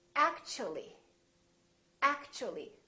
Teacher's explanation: So the T and U create a new sound, and it sounds kind of like ch.